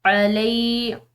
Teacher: لام کے بعد یا ساکن ہے تو اس کو ایک الف کی مقدار کھینچ کر پڑھا جائے گا